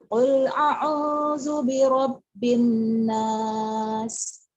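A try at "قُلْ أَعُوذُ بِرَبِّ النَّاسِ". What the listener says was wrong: A-nya sedikit lagi ya. Alif. Qul a'udzu birabbin nas. Alif dulu ya. Jangan ari qul itu. Ya alif baru ain.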